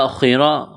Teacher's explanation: خا اور را کو موٹا کرنا ہے